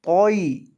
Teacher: یہاں تو کو لمبا نہیں کرنا، کیونکہ یہ حروف مدہ والا یا نہیں بلکہ حروف لین والا ہے